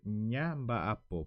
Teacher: la consonante MB, la consonante en B, es del grupo de la consonante nasal, o se le dice también seminasales.